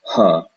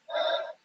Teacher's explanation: when there is no vowel sound after a ha, we actually pronounce it kind of like a sigh, like an exhalation